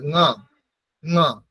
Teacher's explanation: ঙ যেখান থেকেই ক খ গ ঘ উচ্চারণ হচ্ছে সেখানেই হবে